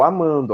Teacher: A última sílaba tônica é man. Então você não vai contar o do.